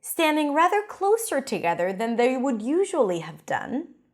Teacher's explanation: I stress the word usually to emphasize